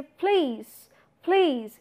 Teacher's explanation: the first pa, which is the start of the syllable, is being put up with aspiration